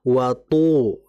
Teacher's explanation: Harus tertahan. To itu tidak boleh ada hamas, nggak boleh ada desisan karena dia bersifat jahar.